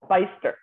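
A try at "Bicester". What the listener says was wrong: Well, not the B-I bit, right?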